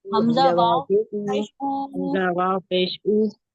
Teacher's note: मद्दा को भी एक अलिफ की मिकदार खींच के पढ़ लेंगे